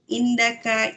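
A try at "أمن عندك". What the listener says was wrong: Indik. Indik itu. Ada min kan? indika.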